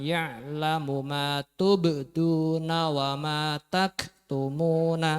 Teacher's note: kemudian untuk ba sukunnya dipantulkan